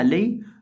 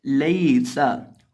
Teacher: यहाँ या साकिन से पहले ज़बर है इसलिए हम यहाँ इसको लंबा नहीं करेंगे। लईसा, लाम ज़बर या लई, सीन लबसा, लईसा। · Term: हरूफे लीन